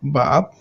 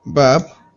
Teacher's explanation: we added some aspiration, the meaning changes, it becomes steam